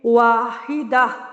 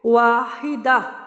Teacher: جب گول تا پہ وقف کریں تو وہ ہائی ساکنہ میں بدل جاتی ہے،